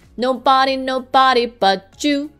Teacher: when the first word ends with d or T and the next word begins with Y it forms the sound J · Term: consonant to consonant linking